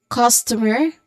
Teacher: it's a short quick unstressed vowel sound like awa sound